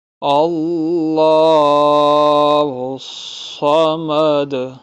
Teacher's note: اللہ کا نام موٹا ہوگا، صاد بھی موٹا پڑھیں گے اور دال پہ قلقلہ ہوگا